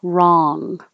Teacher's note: the back of your tongue is going up and touching the top of your mouth